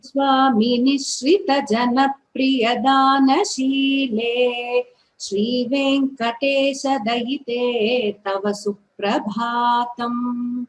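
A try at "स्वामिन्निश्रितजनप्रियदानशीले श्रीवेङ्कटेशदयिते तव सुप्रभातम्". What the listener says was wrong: Much better, Bhagini.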